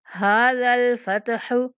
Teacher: ہا کے اوپر بھی کھڑا زبر، اس کو تھوڑا سا کھینچ کے پڑھنا ہے